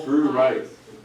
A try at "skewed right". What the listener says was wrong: Not screwed right. Skewed right. Skewed right. It's just not screwed right. There's no R in there. It's a K, also not a C, okay? So it is skewed right instead.